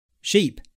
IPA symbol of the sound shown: iː